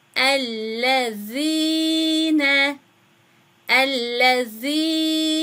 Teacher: Ellezine zel harfini ya uzatmasından dolayı bir elif miktarı uzatıyoruz.